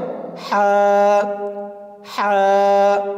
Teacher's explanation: কণ্ঠনালীর মধ্যখান হইতে উচ্চারিত হয়। কণ্ঠনালী আপনার গলার ভিতর থেকে, গলার ভিতরে এটাই হলো কণ্ঠনালী। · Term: হার মাখরাজ